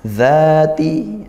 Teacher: Ra-nya tafkhim karena dia ditebalkan ya, karena ra-nya fathah. Zati, za dibaca panjang 1 alif atau 2 harokat seperti itu.